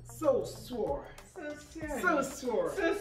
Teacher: We don't say the sh sound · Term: The Ibadan way